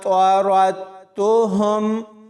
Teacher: را کو تا کے ساتھ ملانا ہے، اس دال ساکن کو نہیں پڑھنا۔ بہت سارے لوگ یہاں پر دال کو پڑھ دیتے ہیں، یعنی را کو دال کے ساتھ ملاتے ہیں، تو یہ ایک بڑی غلطی ہے۔